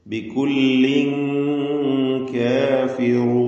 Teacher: ഇഹ്ഫാ ഹക്കീഖി നൽകി അവ്യക്തമാക്കി മണിച്ചുകൊണ്ട് ഉച്ചരിക്കണം ആ മണിക്കലിൽ തർക്കീഖ് ആണ് വേണ്ടത്